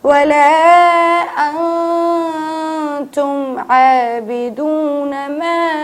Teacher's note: ہم نون کو چھپا کے پڑھتے ہیں